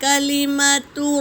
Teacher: پورے حرکت ہے تو اسے جلدی پڑھیں گے، کلیماتو نہیں، کھینچیں گے نہیں